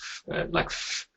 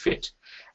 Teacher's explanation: So our strategy would be probably to try and get them to produce a sound that they're already familiar with, like f, yeah, as in fit, where their upper front teeth will get close to the lower lip